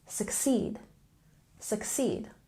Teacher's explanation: And succeed, we have a stress on the second syllable.